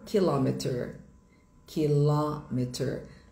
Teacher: O stressed syllable. A sílaba tônica é em la kilometer.